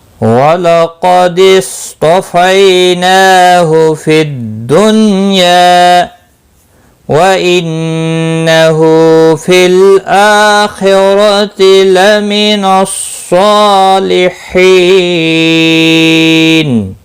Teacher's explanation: لام ساکن کو ہلانا نہیں، حمزہ کے اوپر کھڑی زبر ہے ایک الف کے برابر کھینچ کر پڑھیں گے۔ خا مستعلیہ ہے پر پڑا جائے گا، رو زبر کی وجہ سے پر پڑا جائے گا۔ باقی کسی بھی حرکت والے حرف کو کھینچنا نہیں، سواد مستعلیہ ہے پر پڑا جائے گا، اس کے اوپر کھڑی زبر بھی ہے ایک الف کے برابر کھینچ کر پڑھیں گے۔